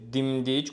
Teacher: Dimdik, quşun dimdiyi vurğu sona düşür.